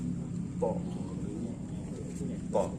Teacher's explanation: Po, ujung lidah berada di gusi tempat tumbuh gigi seri, sama ya. Po, cuman karena huruf po ini tebal maka mulut agak membulat. Po. Setelah diletak lidahnya baru terbaca po.